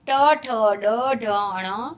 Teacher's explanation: मूर्धन्य वर्ण, जिसका उच्चारण मूर्धा से जिह्वा का स्पर्श होने पर होता है